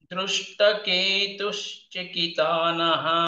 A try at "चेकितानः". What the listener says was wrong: Chekitana, che is dirgha.